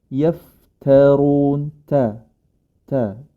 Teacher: yang berharakat fathah nah Ta ini tetaplah ta yaftarun ta ta jangan sampai ikut tebal nih karena huruf rnya dia tebal